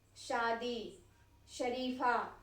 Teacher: हमारा जीभ जो है वह जाकर के तलवे को टच कर रहा है। तो जहां पर हमारा जीभ हमारे तलवे को टच करेगा, तलवे को छुएगा, वहां पर हमारा ये तालव्य श का प्रयोग किया जाएगा, ठीक है।